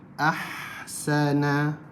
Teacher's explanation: Dia ada angin yang mengalir keluar. Huruf ha banyak angin dia. Jadi kita bila huruf-huruf ni kita jangan sebut ash. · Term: hamas